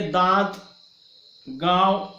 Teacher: इसलिए दांत, गांव, ये जो चंद्रबिंदी वाले जो शब्द है, जब हम उच्चारण कर रहे होते हैं तो हम देखते हैं कि उसकी थोड़ी सी ध्वनि जो है हमारे नाक से भी उच्चारित होती है। तो नासिका विवर से उत्पन्न होने वाली नासिक ध्वनियां होती है, अर्थात अनुनासिक ध्वनियां भी उसको कहते हैं।